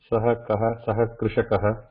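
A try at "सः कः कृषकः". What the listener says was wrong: Saha krishakaha. Okay. Dhanyavadaha.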